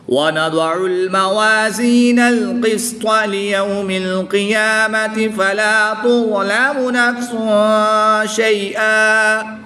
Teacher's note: دو زبر کی تنوین کو وقف کی حالت میں الف مدہ سے تبدیل کر کے پڑھیں گے۔